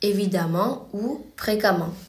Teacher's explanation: le suffixe de l'adverbe sera ement, mais on le prononcera amant